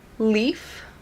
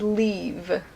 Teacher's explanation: leaf is short, and leave, we stretch it out, we say it for a longer period of time